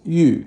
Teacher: That's Yu, fourth tone, which means jade.